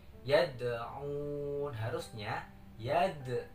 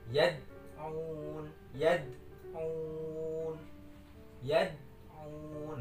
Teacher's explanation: harusnya yad, ada memantul di situ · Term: qalqalah sugro